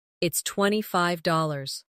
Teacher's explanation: Stress the number slightly so it's clear to the listener.